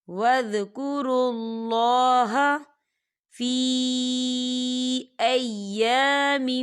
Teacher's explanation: یہاں پر اللہ کا نام موٹا پڑھا جائے گا کیونکہ اللہ کے نام سے پہلے پیش ہے